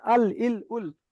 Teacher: জীবের আগার কিনারা এবং সামনের উপরের দুই পাশের দাঁতের গোড়ার সাথে লাগিয়ে উচ্চারিত হয় লাম